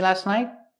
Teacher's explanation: It's more common to hear night with a stop T at the end.